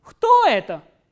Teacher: the pitch goes up on the interrogative word and then it comes down towards the end.